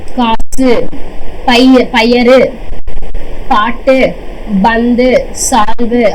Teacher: அதாவது இக்கு பிளஸ் ஊ சொன்னாங்களா, அதாவது வந்துட்டு வல்லின எழுத்துக்கள், வல்லின எழுத்து உகரத்தோட சேர்ந்து தன்னோட ஒரு மாத்திரை அளவில் இருந்து அரை மாத்திரையா குறைஞ்சு ஒலிக்குது அப்படின்னா அத வந்துட்டு நம்ம வந்துட்டு என்னன்னு சொல்றோம்னா குற்றியல் உகரம்னு சொல்றோமா.